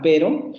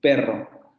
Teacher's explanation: Pero y perro, sabemos que no son lo mismo en español, porque ese rasgo, vean cómo los dos fonemas son alveolares, y los dos fonemas son sonoros. Difieren por el modo de articulación. Uno es simple y el otro es múltiple. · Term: vibrante simple